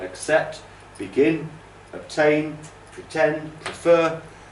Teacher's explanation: it's normally the second syllable that's stressed